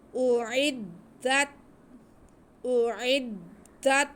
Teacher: اعدت اعدت، دال پہ زبر، آگے تا ساکن، تا کی آواز کو ہلنے نہیں دینا، بہت آرام سے ادا کرنا ہے۔